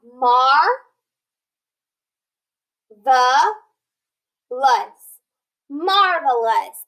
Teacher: That E had that schwa sound